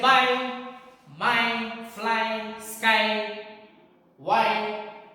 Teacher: it is giving the sound of I, the diphthong, combination of A and E.